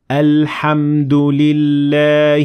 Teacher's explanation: notice how we pronounce the hamsa twasal at the beginning of the word al-hamdu because we started there and we said hamdulillah but we ignored the following hamzat wassel